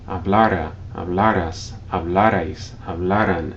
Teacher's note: Notice that when you say these forms, hablara, hablaras, hablarais, hablaran, you stress the second to last syllable, even though there's no written accent